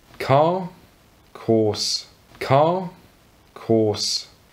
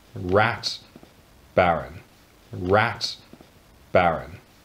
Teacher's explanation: he only ever produces the r sound when there's a vowel straight afterwards